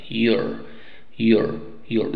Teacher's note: y qué vocal obviamente la a y nos queda you er ese sonido de esa r pasa a ser miembro de la primera sílaba